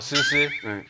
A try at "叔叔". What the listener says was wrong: 叔 叔 ， 诗 ， 不 是 诗 诗 ， 叔 叔 ， 叔 叔 ， 二 声 ， 叔 ， 抬 头 ，